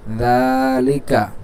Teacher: এই জালে টান হবে, লামেও এবং কাফে টান হবে না